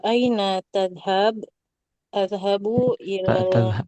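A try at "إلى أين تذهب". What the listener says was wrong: pendek tadhab aina tadhab gitu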